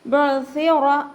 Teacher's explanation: സ ഉച്ചരിക്കുമ്പോൾ കുറച്ച് എയർ നമ്മുടെ പല്ലിൻ്റെ ഇടയിലൂടെ പുറത്ത് പോണ രീതിയിൽ വേണം ഉച്ചരിക്കാൻ